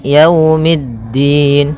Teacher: Pada lafal yau di sini ada bacaan lin yaitu berupa fathah bertemu dengan huruf wau. Maka yaumiddin kemudian mid langsung ke da.